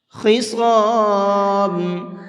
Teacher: یہاں پر خا کو بھی اور صاد کو بھی دونوں حرفوں کو منہ بھر کے پڑھیں گے، پر کر کے پڑھیں گے۔